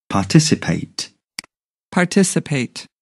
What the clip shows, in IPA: pɑːˈtɪs.ɪ.peɪt